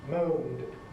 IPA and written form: məʊnd (moaned)